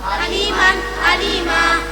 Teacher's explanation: fathatain dibaca wakaf, panjangnya satu alif atau dua harakat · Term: Mad iwad